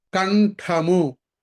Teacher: నా శబ్దం రావాలి, మా రాకూడదు.